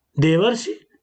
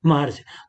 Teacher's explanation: पहले शब्द की अंतिम ध्वनि आ है और दूसरे शब्द की पहली ध्वनि री है, दोनों मिलकर के अर हो जाते हैं।